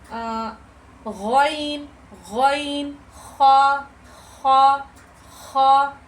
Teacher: अदना हलक यानी मुंह की तरफ वाला जो हमारा हलक का हिस्सा होता है